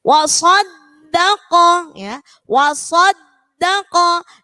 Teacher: wa-nya tipis, sod-nya tebal, da-nya tipis, qaf-nya tebal. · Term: huruf tebal